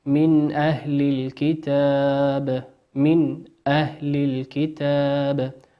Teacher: نون ساكنة أتى بعدها حرف الهمزة، وقلنا الهمزة من حروف الإظهار نظهرها كما هي